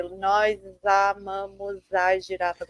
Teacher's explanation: you're pronouncing the S more as an S and less as a sh, whereas European Portuguese would always be sh